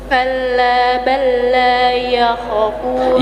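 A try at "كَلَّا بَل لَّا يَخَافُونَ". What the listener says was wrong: Ya kha panjang.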